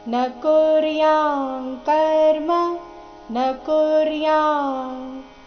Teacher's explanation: ಅನುಸ್ವಾರ ಇಲ್ಲಿ ಕ ವರ್ಗದ ಅನುನಾಸಿಕ ಂಗ ರೀತಿ ಉಚ್ಚಾರಣೆ ಮಾಡಬೇಕು